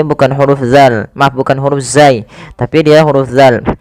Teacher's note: Agar lebih tepat di dalam melafalkan huruf zal, ujung lidah kita itu tempelkan saja ya dengan gigi sari sehingga za terbunyikan dengan huruf zalnya